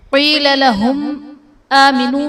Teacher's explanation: وَإِذَا قِيلَ لَهُمْ آمِنُوا كَمَا آمَنَ النَّاسُ، قِيلَ لَهُمْ آمِنُوا میں میم ساکن کے بعد حمزہ دوسرے کلمے میں ہے۔ میم ساکن کے بعد حرف با اور میم کے علاوہ حمزہ ہے تو یہاں پر اظہار شفوی کا قاعدہ ہوگا، یعنی میم ساکن میں ہم غنہ نہیں کریں گے